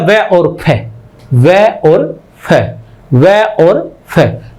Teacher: 6 number पर क्या है, 5 नंबर तक तो सिंपल थे, 6 नंबर पर हमारे पास दंतोष्ठ्य आ जाता है, जो दांत और ओष्ठ दोनों के सहयोग से बोला जाता है